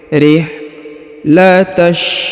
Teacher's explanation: Liilafi Quraisy ilafihim rihlatash ya, perhatikan huruf ha sukun ya, rihlatash. Huruf ha ditipiskan ya, karena ha tipis berharokat sukun.